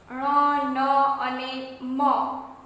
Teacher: ઉચ્ચારણ વખતે હવાનું મોજું નાકમાંથી કે મોંમાંથી પસાર થઈ બહાર આવે ત્યારે જે ધ્વનિ નિર્માણ પામે તે અનુનાસિક ધ્વનિ કહેવાય છે.